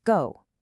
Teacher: If you say it out loud, notice how your lips have to actively change shape, rounding out to execute that specific, super smooth glide. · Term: closing diphthong